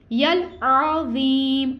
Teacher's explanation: आइन जो यहाँ पे है आइन हल्क के दरमियान वाले हिस्से से अदा होगा और इसके ऊपर हरकत है, हम इसको नहीं खींचेंगे।